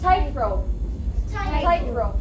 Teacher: the stress in the first word is tight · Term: compound noun